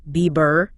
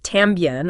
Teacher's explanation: B will have a harder sound at the beginning of a word or after an M or an N.